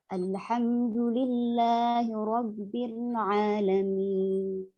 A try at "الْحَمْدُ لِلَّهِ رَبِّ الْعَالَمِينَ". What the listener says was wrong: الحمد لله رب العالمين بدون زيادة في المد.